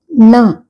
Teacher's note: நாவின் நுனி மேல்வாய் அண்ணத்தின் நடுப்பகுதியை தொடுவது நாக்கோடனுடைய மேல இருக்குல நம்மளோட மேல் அண்ணத்துல நடுவுல தொடுது நா அப்போ கொஞ்சம்